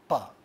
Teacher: we cannot say a sound like pa without bringing the two lips together, and therefore this sound is called bilabial sound.